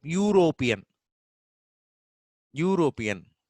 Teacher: even though it is starting with the U in European, the initial sound is Ya. Ya plus U. U, then Ra, O, Pa, Iya, Na.